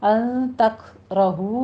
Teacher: رہو میں نون ساکن کا قاعدہ اخفا حقیقی ادا کریں گے، تک میں کاف پر ہمس کریں گے، را مفخم پڑی جائے گی ، ہو میں واو مدہ ہے، 2 کاؤنٹ کرنے ہیں دونوں